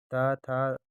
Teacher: ता था दंत व्यंजन है